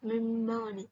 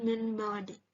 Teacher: Contohnya yaitu yang pertama contoh nun yang terdapat pada kata mim bawadi, yaitu nun mati bertemu huruf ba, yang dimana dibacanya mim bawadi bukan min bawadi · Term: iqlab